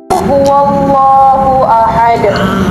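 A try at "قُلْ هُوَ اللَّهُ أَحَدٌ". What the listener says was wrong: Because you pronounce it with a K.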